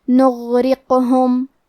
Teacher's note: غین کی ادائیگی حلق کے اوپر والے حصے سے ہے. غین حروف تفخیم میں سے ہے تو ہم یہ حرف کو موٹی آواز میں پڑھیں گے. · کیونکہ یہاں غین ساکن ہے تو ہمیں غین کو ظاہر کرنا ہے. حرف را کے نیچے زیر ہے تو ہم را کو پتلی آواز میں پڑھیں گے. قاف پہ جزم ہے لہذا ہمیں قاف کو قلقلہ سے پڑھنا ہے.